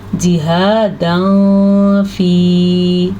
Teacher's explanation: فا کی وجہ سے تنوین کو چھپا کے پڑھیں گے کیونکہ یہاں پہ اخفا ہو رہا ہے